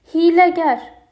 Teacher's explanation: Yorucu hiyləgər i, ə, ə. Təkcə incə saitlər istifadə olunub